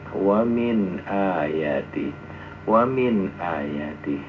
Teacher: nun mati ketemu hamzah misalnya tidak dibaca dengung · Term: bacaan izhar